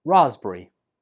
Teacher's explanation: And the stress goes on the 1st syllable.